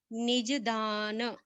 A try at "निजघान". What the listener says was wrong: धानो मत पढ़िए, ये गलत लिख गया है। हाँ घ होना चाहिए, ध गलती से लिख गया। निजघान, घान, ध, त थ द ध, ये ध गलत है लिखा हुआ, इसको ये शब्द पढ़िए निजघान। जघानो, बोलिए जघानो। घ, घर बोलिए, घर।